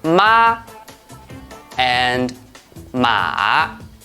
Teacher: These two words have the same initial and final, but they have different pitch inflections. Their tones are different, so they have different meanings.